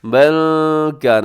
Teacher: آواز کو ناک میں لے جائے گا، نون کی آواز کو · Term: اخفا